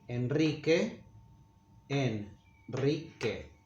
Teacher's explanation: it's a special case when it's preceded by the letter N, as in the name Henry, Enrique, we make it strong, but we write only one R. Enrique, Enrique, and we say Enrique.